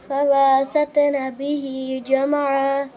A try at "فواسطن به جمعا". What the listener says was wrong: फवसतन फवा बा को खींच नहीं देना बेटे। फवसतन बिही जमआ